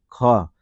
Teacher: घ बोल के देखिए, घ कहाँ से निकल रहा है? कंठ से निकल रहा है